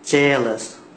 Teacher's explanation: Jealous, the stress, the first syllable